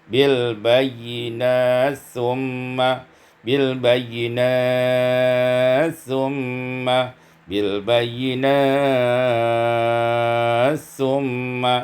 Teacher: idgham ta fil sa, diidghamkan ta pada sa maka menjadi bil bayyinat summa, bil bayyinat summa, bil bayyinat summa, dibaca dengan qasar, tawassut dan isba'.